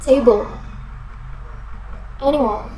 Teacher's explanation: Suku kata pertama menerima penekanan dan suku kata kedua tidak menerima penekanan.